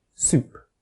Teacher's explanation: The answer is that s in C is said with unrounded lips, because the vowel afterwards is unrounded, whereas the s in soup is said with rounded lips, because the vowel afterwards is rounded. For this reason, lip rounding is actually a form of assimilation, because the s has changed to become more similar to the sound next to it.